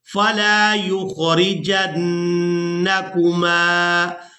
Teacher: یعنی نون کی آواز کو ناک کے بانسے سے ادا کریں گے. غنہ جب کرتے ہیں تو آواز کو کچھ دیر ناک میں روک کر رکھتے ہیں.